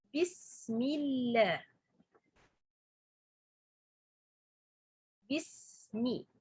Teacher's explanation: A lam for Allah become light when this lam preceded by letter has kasra